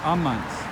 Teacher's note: the stress falls on the second to last syllable